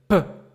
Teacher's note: the air goes in an explosive way out of my mouth. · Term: le son P